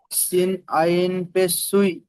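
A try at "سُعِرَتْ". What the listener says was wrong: সুই নয় সু সুই না সু হ্যাঁ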